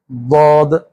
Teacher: زبان کا جو داڑھوں کے ساتھ والا حصہ ہے یہ داڑھوں کے ساتھ لگ جائے گا، ضاد، زبان سیدھی رہے گی، ضاد، ضاد، عض، مغضوبی، ولضالین۔